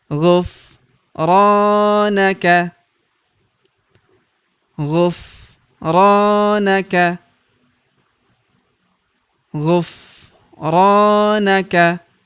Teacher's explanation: Huruf ra kita panjangkan 2 harokat karena terdapat tanda alif di depannya